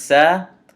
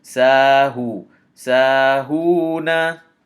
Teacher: we extend the sin with the fatha to two movements. Sa and then ha dhamma waw sukun hu.